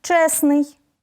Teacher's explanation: у групі приголосних наприклад утворимо прикметник від слова честь виходить чесний важко вимовити розташовані підряд три приголосні звуки тому в цьому слові відбудеться спрощення